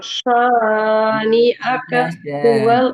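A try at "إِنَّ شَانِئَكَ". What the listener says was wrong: இன்ன இன்ன ஷானி இன்னஷ் என்று வரக்கூடாது. இல்ல, இன்னஷ் வரக்கூடாது. இன்னஷ இன்னஷ.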